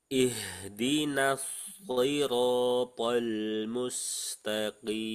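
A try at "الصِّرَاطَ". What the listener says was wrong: Nah, di sini ada yang perlu dimaksimalkan lagi tebalnya huruf to, roto. Tadi masih rotol, tol, tol, tol, pol, po, pol, po, pol.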